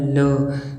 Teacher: जब हमारे मुंह से हवा निकलती है तो वो सीधे मुख से नहीं, वो पार्श्व से होकर निकलती है। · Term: पार्श्विक व्यंजन